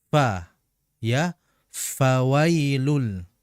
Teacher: Ya, jaroyanu annafas mengalirnya nafas atau udara atau desisan ketika mengucap mengucapkan huruf fa · Perhatikan di situ pada huruf fa, ya, pada huruf fa, di mana huruf fa ini merupakan huruf yang keluar di dua bibir, ya, di mana dalam pengucapan huruf fa adalah dengan menempelkan punggung bibir bawah atau bibir bawah bagian dalam dengan ujung gigi seri atas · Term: hames